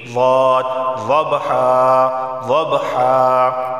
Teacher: ضاد کا مخرج حافہ لسان زبان کی کروٹ اوپر کے داڑوں سے لگے گی